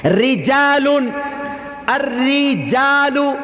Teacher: را کے نیچے زیر ہے تو را باریک پڑھا جا رہا ہے